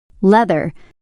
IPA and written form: ˈleð.ɚ (leather)